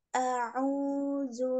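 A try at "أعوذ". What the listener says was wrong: Hanya jangan e, jangan e, tapi a.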